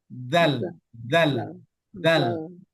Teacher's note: Di ujung lidah posisinya berada di antara dua gigi seri bagian atas dan bagian bawah. Jadi seperti keluar sedikit.